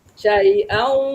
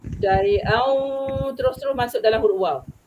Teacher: bila tanwin berjumpa dengan waw, betul-betul dia masuk. Dia baru dia masuk. Dia tak sembunyi. Syai'au, seolah-olah huruf waw yang berdengung tu kan.